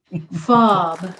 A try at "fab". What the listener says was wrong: He figures out how to say fab instead of fob.